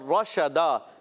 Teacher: رشدا شین میں تفشی ہوتی ہے، منہ میں آس پھیلتی ہے